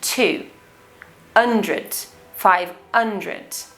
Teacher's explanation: he also didn't pronounce the word hundred with the letter h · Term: not pronouncing the letter h